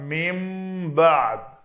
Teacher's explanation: تو نون ساکن کے بعد با ہے تو اس کو اقلاب کا قاعدہ کہتے ہیں، اس نون کو ہم نے میم سے بدل کر پڑھا